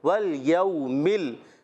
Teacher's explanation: والیوم، واو کو لام سے ملانا ہے مگر لام کو ہلانا نہیں ہے. اور واو ساکن سے پہلے زبر آ رہا ہے تو ہو گیا واو لین، نرمی سے ادا کریں گے.